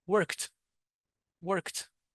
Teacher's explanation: this ed d is pronounced as a t.